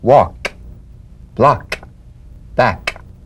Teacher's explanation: with the tongue in the G position let the tongue spring away in the soft unvoiced click of the K drum beat feel a crisp tap and a pulsation in the back of